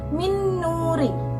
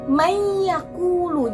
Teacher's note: Jadi ketika nun mati bertemu dengan nun ya, min nuri ya, cara membacanya langsung dimasukkan. Jadi minnya nggak sendiri tapi nun mati bertemu dengan nun mati jadi langsung masuk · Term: idgham bigunah